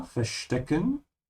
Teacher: Remember to pronounce the V like an F